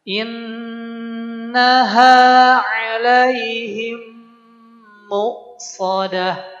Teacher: Pertama ketika in nun tasdid innaha kemudian alaihim mim tasdid. Ya, ini pun juga ada ghunahnya.